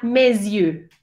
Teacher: Y entonces esa S empieza a sonar y suena como una Z. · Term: la liaison